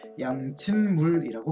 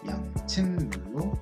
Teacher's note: 디귿이 끝소리고요. 첫 소리가 미음인 소리와 만나 있어요. 그러면 미음에 영향을 입게 될 겁니다. 비음화 현상을 겪게 될 거예요. 그래서 양친물로 발음이 된다는 겁니다.